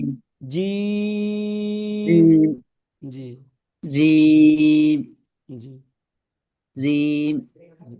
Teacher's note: আলিফ জি বা জি তা জি সা জি, জিম জিমটা টান দিয়ে বলুন, জিম জিমটা প্রায় 3 আলিফ টান হবে।